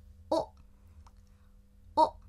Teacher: 虽然它是哇行的，但是这个▁W▁已经不发音了